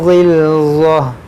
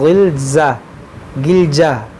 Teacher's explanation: देखिए ग़िल्ज़ह, यहाँ ग़ैन भी हुरूफ़ मुश्तालिया है और ज़ा भी हुरूफ़ मुश्तालिया है, दोनों को मोटा पढ़ेंगे। ग़िल्ज़ह, यहाँ पर देखेंगे तो है, तो यहाँ पर रुकेंगे, वक्फ़ करेंगे, तो इस गोल ता को हा साकिना बनाएंगे।